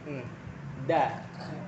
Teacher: ujung lidah bertemu dengan pangkal gigi seri atas ya, dari gigi seri yang atas maksudnya gitu. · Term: huruf dal